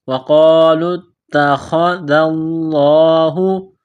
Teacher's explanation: تا کے اوپر تشدید ہے تو تا کو دبانا ہے، سختی کرنی ہے · ذال کو پڑھتے وقت زبان تھوڑی سی باہر نکالیں گے